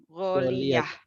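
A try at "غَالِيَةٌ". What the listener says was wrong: Gholiyatun ya sampai di belakang.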